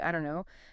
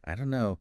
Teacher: the don't and no just merge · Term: linking